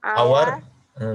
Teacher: এইচ হচ্ছে এখানে অনুচ্চারিত H, H এর উচ্চারণ হচ্ছে না, সেজন্য এখানে আমরা এন ইউজ করেছি।